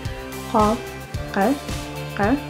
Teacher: And it is made by the back of tongue rises and touches soft palate